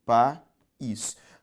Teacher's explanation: Ao separar país, veja só, país. Duas vogais juntas que na separação silábica se separaram. O nome disso é hiato, a segunda vogal do hiato é a vogal I, e por isso que foi acentuada.